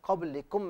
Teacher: با کا مخرج دونوں ہونٹوں کے تر حصے ہیں